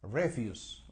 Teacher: The stress is on the first syllable, o sea, el acento está en la primera sílaba.